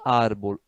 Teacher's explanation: Então, não é aguda, árbol. Árbol é uma palavra grave. É a penúltima sílaba que é tônica.